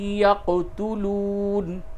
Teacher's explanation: یق قاف میں قلقلہ ہوگا